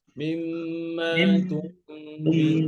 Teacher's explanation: বাইনে তাওয়াস্তুর হরফ, আওয়াজটা আংশিক জারি থাকবে।